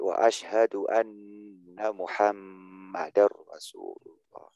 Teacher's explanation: Ketika tasdid di huruf nun dan atau mim ya guna gitu loh, ditahan temponya. Bukan melambatkan.